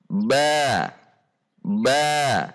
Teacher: Makhraj huruf ba dikeluarkan dari pertemuan bibir bawah dan bibir atas.